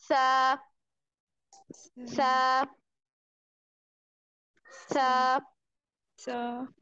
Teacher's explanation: जुबान की जो हमारी नोक है, जो टिप है, उसे सामने वाले ऊपर के दो दांत उनके अंदरूनी किनारों से लगाते हुए बारीक और नरमी वाली आवाज में पढ़ेंगे